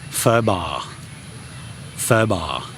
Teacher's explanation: In the case of ba, it goes down, so it's pho ba, pho ba.